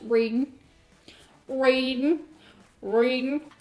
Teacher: Southerners often leave the final G off present tense verbs, so words like reading becomes reading, reading, reading.